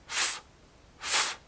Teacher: To make the F sound, your lower lip touches your upper teeth here. F, f.